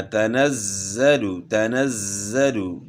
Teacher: تنزل نہیں پڑھنا، تنزل، تنزل. اور زا میں سیٹی کی مثل آواز ہوگی، صفت صفیر کو ادا کرنا ہے.